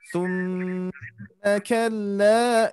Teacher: summanya kurang dengungan Bu. Harusnya ditahan